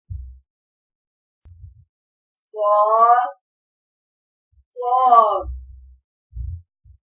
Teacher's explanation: جب زبان کی نوک اوپر اور نیچے کے اگلے دو دانتوں کے کنارے سے لگے تو صاد ادا ہوتا ہے، جیسا کہ تصویر میں واضح کیا گیا ہے. موٹا پڑا جائے گا، سیٹی کی آواز آئے گی